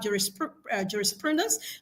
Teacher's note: the stress pattern is on the penultimate syllable, pru,